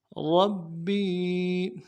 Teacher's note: یا مدہ ہے، ایک الف میں کھینچیں گے، غفر لی ربی، را کو موٹا کریں گے، با کے اوپر تشدید ہے زور دیں گے